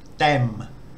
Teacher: The initial consonant is the da dao, which has a sound between an English D and a T. And the final consonant is the mo ma, which has an M sound.